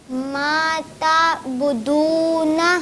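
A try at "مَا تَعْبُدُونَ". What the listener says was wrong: यहाँ पर आइन आप ठीक से अदा करेंगे माता बुदूना।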